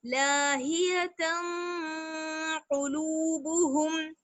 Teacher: قاف جو ہے وہ حروف اخفا میں سے ہے، اس لیے تنوین کی آواز کو ہم چھپا لیں گے